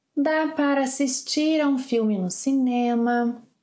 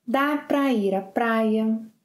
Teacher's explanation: Don't forget that para can be pronounced as pra.